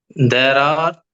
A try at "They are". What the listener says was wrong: தேர்னு படிக்க கூடாது. தே.